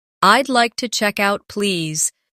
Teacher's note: Notice the smooth link between check and out.